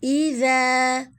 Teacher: ذال کو نرمی سے پڑھیں گے اور الف مدہ